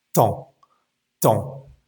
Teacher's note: La palabra tiempo se escribe temps, pero simplemente la E y la M nos va a dar como un sonido nasal y va a sonar temps, temps. Nuestra boca termina abierta y nos olvidamos de esa P y de esa S. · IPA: /tɑ̃/